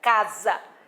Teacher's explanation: Um S só, no meio de 2 vogais, o som não é de S, é de Z.